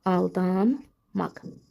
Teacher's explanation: Aldanmaq tələffüzdə iki n da daha doğrusu N M kimi tələffüz olunur və qoşa M özünü göstərir